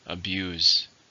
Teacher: It's a verb. How many syllables in the word abuse? 2. Stress on the second.